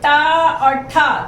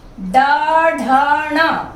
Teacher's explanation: ट और ठ दोनों अघोष हैं, ड, ढ, ण तीनों घोष हैं। इनका भी स्पर्श के द्वारा, प्रयत्न के द्वारा, यानी कहीं ना कहीं स्पर्श होता है मुख में, तब इनका उच्चारण होता है।